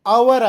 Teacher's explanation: ಇಲ್ಲಿ H silent ಆಗಿದೆ, H silent ಆಗಿದೆ, ಹಾಗಾಗಿ ಇದು ಸ್ವರದ ಧ್ವನಿಯಿಂದಲೇ ಆರಂಭವಾಗುತ್ತದೆ. ಸ್ವರದ ಧ್ವನಿ ಅಂದರೆ ಎಚ್ ಸೈಲೆಂಟ್ ಇರುವ ಕಾರಣ ಓ ಯು ಆರ್ ಇದರ ಉಚ್ಚಾರ ಅಷ್ಟೇ ಆಗ್ತದೆ, ಅಂದರೆ ಇದು ಅವರ್ ಆಗ್ತದೆ.